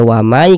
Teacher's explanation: Tampilkan sehingga cara membacanya dengan cara apa tadi dengan cara memasukkan memasukkan bunyi Nun sukunnya ya dilebur ke huruf ya kemudian disertai dengan gunah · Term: idgham bhunah